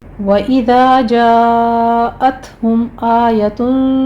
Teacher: वइज़ा में अलिफ मद्दा, جاءت ہم میں مد متصل واجب ہے، 5 کاؤنٹ کریں گے، تا پر ہمس ہوگا، میم ساکن کا اظہار شفیع ہے قاعدہ۔